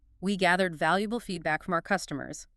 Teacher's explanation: The pitch goes down firmly at the end.